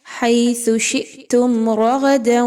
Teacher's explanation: را اور غین دونوں کو موٹا کر کے پڑھیے، دونوں موٹے حروف ہیں، را زبر کی وجہ سے اور غین آلریڈی موٹا حرف ہے، جس بھی کنڈیشن میں ہو اس کو موٹا ہی پڑھا جاتا ہے۔